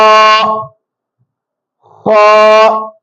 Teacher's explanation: ஏழு வல்லினமான எழுத்துக்கள் இருக்கு அரபு எழுத்துக்கள்ல அதுல முதல் வல்லினமான எழுத்து ஹா ஹா தொண்டையினுடைய ஆரம்பத்திலிருந்து வெளியாகும்